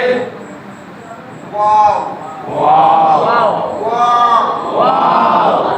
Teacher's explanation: কি বা বা বা বাড়তি উপরে আছে শুকনো জায়গা মিম মিম ওয়াও দুই ঠোঁট গোল করিয়া ওয়াও দুই ঠোঁট গোল করিয়া দুই ঠোঁটের ভেজা জায়গা হইতে দুই